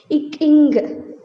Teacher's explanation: நாவின் முதற்பகுதி அன்னத்தின் அடிப்பகுதியில் பொருந்துவதால் பிறக்கின்றன